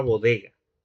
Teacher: la G de bodega remite a la oclusiva velar sonora